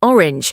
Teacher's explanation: A rounded O that glides into a soft W, lips stay round.